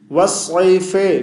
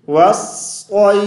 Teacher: इलाफिहिम रिहलत अश्शिता, वाव को सौद शद्दा के साथ मिलाएंगे, वाव सौद ज़बर वस, सौद या ज़बर सई, वस्सई, फा ज़ेर फी, वस्सईफी, वस्सईफे, फे नहीं पढ़ेंगे, ठीक है। हाँ, वक़फ़ करेंगे तो फा को साकिन कर देंगे